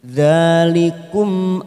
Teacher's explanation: mim idzhar syafawi kita baca jelas tanpa mendengung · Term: izhar syafawi